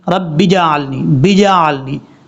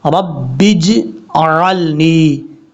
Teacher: कलकला ज़रूर करेंगे, लेकिन कलकला इतना करें, कलकला का मतलब होता है बाउंस, यानी आवाज़ का लौटना। आवाज़ लौटेगी ज़रूर इस हर्फ में, जीम में कलकला ज़रूर करेंगे